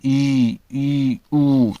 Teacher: संवत जिन स्वरों के उच्चारण में मुख द्वार लगभग बंद रहता है